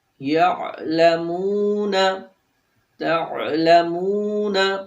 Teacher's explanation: یہاں پر جو عین ہے اس کو ہم سافٹ یعنی کہ نرمی سے ادا کریں گے، اس کے اندر جھٹکا نہیں ہوگا۔